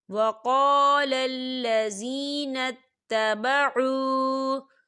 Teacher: وَقَالَ الَّذِينَ اتَّبَعُوا، دیکھیے تبعوا، یہاں پر واو ساکن ہے، واو ساکن سے پہلے پیش ہے تو یہاں پر واو مدہ ہو رہا ہے، تو ہم اسے دو حرکت کی برابر کھینچ کے پڑھیں گے